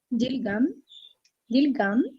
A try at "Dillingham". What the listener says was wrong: Pronounce the H.